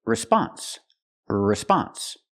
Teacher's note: the stress is on the second syllable not the first